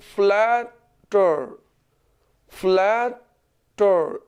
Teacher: Last पर stress फॉल नहीं करता, वो नुमाया तौर पर उभर के सामने नहीं आता, उसकी अदायगी नुमाया तौर पर नहीं होती, बल्कि पीछे फर्स्ट सिलेबल या किसी और सिलेबल पर अगर स्ट्रेस फॉल करे तो फिर हम ईडी आईएनजी ऐड करते हुए कभी भी लास्ट लेटर को डबल नहीं कर सकते।